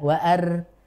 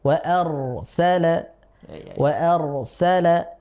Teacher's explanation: suaranya terkumpul di langit-langit ya karena pangkal lidahnya terangkat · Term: tebal